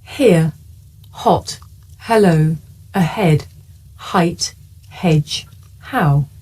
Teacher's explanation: this is a voiceless consonant it makes very little sound because it's really just your breath you can hear it at the beginning of the word here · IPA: /h/